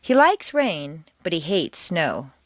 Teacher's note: Like and hate are contrasted and are the stronger words in the sentence.